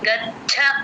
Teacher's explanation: చ కింద చ వత్తు ఎప్పుడు వచ్చినా సరే గాలి బయటకి వదలాలి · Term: మహాప్రాణం